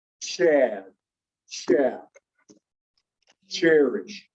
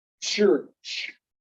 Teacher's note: you will feel your tongue do almost a t and then roll into that sh